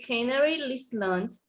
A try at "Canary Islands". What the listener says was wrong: Canary Island, there is no S, yes, guys, from the